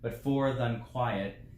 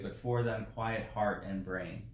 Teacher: You could have two unstressed, that would be acceptable in iambic, but most likely what we got is an elision here, that the and un are being said as one, and that's the way I read it.